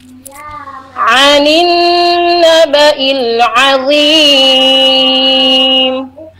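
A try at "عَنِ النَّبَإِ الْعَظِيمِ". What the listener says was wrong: Yang mim sukunnya kurang alir ya, alirkan dulu, jangan langsung diputus. Anin naba'il azim, tidak zim, tapi zim, tidak tapi gitu ya.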